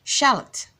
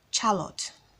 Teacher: the letter O in this name does not make it all sound but the short sound and as mentioned earlier it is a weak sound you don't say it with much force